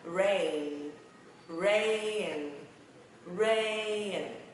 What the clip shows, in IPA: rein